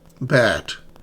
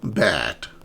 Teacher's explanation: my mouth is wide open when I say this. And your tongue is low front.